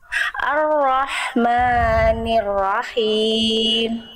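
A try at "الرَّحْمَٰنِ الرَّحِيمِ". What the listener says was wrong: Maknya jangan bablas, 2 harokat Bunda ya. Ar-Rahmanir-Rahim.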